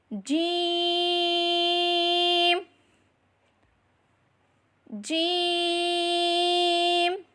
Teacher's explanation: زبان کے درمیان اور تالو کے درمیان سے ادا کریں